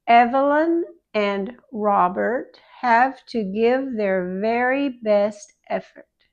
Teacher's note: With the V, the bottom lip goes backward inside the mouth and between the teeth, and it's voiced.